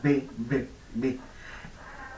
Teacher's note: Pero la diferencia fundamental es que si ustedes se tocan acá y pronuncian la B, B, B, las cuerdas vocales suenan. Por eso decimos que la B es sonora.